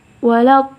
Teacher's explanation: Mat di situ kita harus panjang membacanya 6 harakat karena di situ hukumnya mat lazim kalimi mutsaqal.